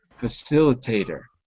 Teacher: Actually, the T is a D, not facilitator, but facilitator.